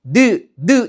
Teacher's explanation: 그 다음에 혀라는 위치에서 니은 발음할 때 느 이런 거 발음해 보면 혀 끝이 윗입 몸에 붙었다가 떨어지면서 발음이 나죠